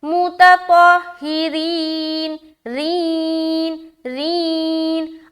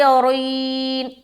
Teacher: रा को मोटा नहीं करना, रा को बारीक रखनी है